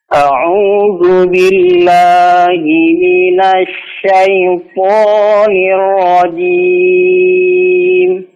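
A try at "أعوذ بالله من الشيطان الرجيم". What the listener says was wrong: A'udzu billah, lanya tipis, jangan billah, ya. Billah.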